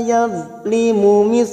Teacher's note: huruf dha jangan sampai memantul karena bukan qalqalah kita tahan. Yazlimu sa sukun misqala fathah diikuti alif 2 harokat.